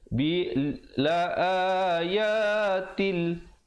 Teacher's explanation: ta tanwin di bawah bunyi tin asalnya, tapi bila datang lam hukumnya idgham bila gunnah, masuk tanpa dengung